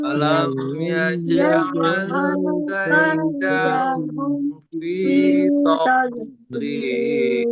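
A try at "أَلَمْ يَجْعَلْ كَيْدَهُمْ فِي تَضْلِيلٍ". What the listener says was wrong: Oh, masih malah ada ininya tadi. Kehames tadi. Tad, tad, jangan ada hamesnya. Tadlil.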